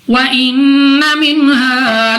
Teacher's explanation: نون مشدد غنہ کر کے پڑھیں گے